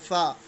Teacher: this sound is formed with the help of upper teeth and lower lip